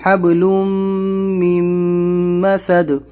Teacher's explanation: یہ ادغام میم ہے، یہ بھی ادغام میم ہے، تنوین کے بعد میم اور نون ساکن کے بعد میم، تشدید ہے ان کے اوپر، غنہ